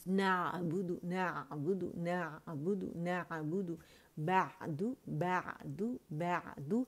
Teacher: اسے با موٹا نہیں کرنا, باریکی سے کریں